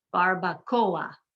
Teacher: The O and the A do not blend together. They're not a diphthong. They're 2 separate sounds because they're both strong vowels.